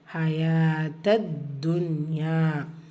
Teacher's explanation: தால்ல ஷத்தா இருக்குது, அழுத்தம் கொடுக்கணும்